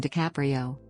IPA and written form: dɪˈkæprioʊ (DiCaprio)